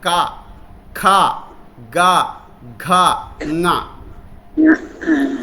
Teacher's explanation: మన కొండ నాలిక దగ్గర కంఠంలో నాలిక తగులుతూ ఉంటుంది